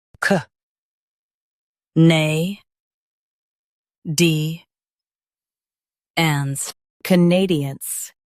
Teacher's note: Stress nay and soften d-ands.